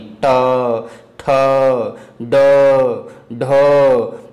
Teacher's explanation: मूर्धा और जीभ जब मिलती है तो मूर्धन्य हो जाता है जैसे अभी हमने बताया था कि ट वर्ग मूर्धन्य के अंतर्गत